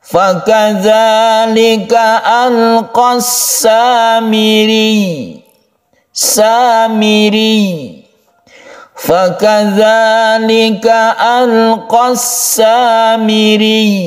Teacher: Jadi kita cukup menekan ya-nya karena dia itu bertasydid, itu saja, tanpa dipanjangkan.